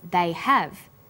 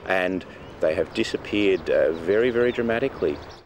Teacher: these pronouns and auxiliary verbs have both strong and weak forms when they are unstressed the H sound is dropped but when stressed the H sound is pronounced